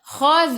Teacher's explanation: Kha biar ada angin yang menggelegak